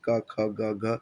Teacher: ये कंठ कहता है कंठ से यानी गले से जो आवाज निकलती है क ख ग घ